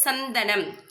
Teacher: அந்த நுனி நாக்கு வந்து பல்ல டச் பண்ணுது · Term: இணை எழுத்து